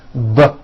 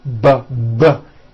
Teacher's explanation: are produced exactly the same way here in your mouth but the P sound has no voicing and the B sound BB does have voicing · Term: paired consonants